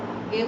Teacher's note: কারণ এই প্রসৃতর ঘরে আমরা পাচ্ছি যে এখানেও ঠোঁট কিছুটা ছড়িয়ে ছড়িয়ে থাকছে। দেখো এ বলার সময় ঠোঁট কিছুটা ছড়ানো, একটু কমছে যদিও, কিন্তু ছড়ানো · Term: প্রসৃত স্বর